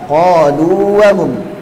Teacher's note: Waw maddiyah ada di al-jauf, sedangkan waw ghairul maddiyah ada di asy-syafatain.